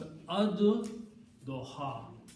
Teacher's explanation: when you pronounce these together, then lam is not pronounced, but dod is pronounced twice